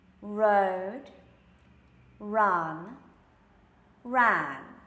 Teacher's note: for each of those sounds, the tongue is curving back to prepare the R sound for the word, and then coming down for the vowel, and then doing whatever it needs to finish the word.